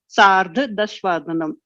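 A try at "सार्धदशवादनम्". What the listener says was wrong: Dasha. So all your pronunciations, you need to give that akara consciously. It's there. It happens. The influence of our native language will always be there. We need to try to consciously work. Sardha Dasha Vadanam.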